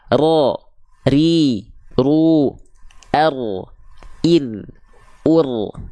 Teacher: huruf ra itu menuntutnya enggak banyak getaran kok dia sedikit tapi tetap tegas lugas dan jelas